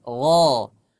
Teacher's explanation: Huruf ghain kalau dia dibaca fathah di harokat fathah dia dibaca tebal.